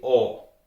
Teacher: the vowel A is almost always pronounced like an O